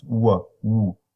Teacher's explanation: So you have ooh, you begin with the same characteristics as the oo, with high back tongue position, lip rounding, and the formant value is very similar to oo at the beginning, low F1 and relatively low F2.